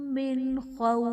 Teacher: نون ساکن کے بعد حروف حلقی میں سے خوا آ رہا ہے تو یہاں پر اظہار کا قاعدہ ہوگا، یعنی نون ساکن میں ہم غنہ نہیں کریں گے۔ خوف میں واو ساکن سے پہلے حرف پر زبر ہے، واو لین کا قاعدہ ہے اور وقف کی صورت میں فا ساکن ہو جائے گا، یعنی عارضی سکون ہے تو یہاں پر ہمارے پاس مد لین عارض کا قاعدہ ہوگا۔